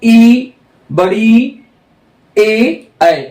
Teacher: जो जीव का अगला पार्ट है वहां से हम ई बड़ी ए ऐ यह चार जीभ के अग्र भाग से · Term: अग्र स्वर